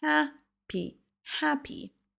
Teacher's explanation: La première syllabe est prononcée plus longue et plus longtemps que les autres. · Prononcez bien le H en début de mot et accentuez la première syllabe.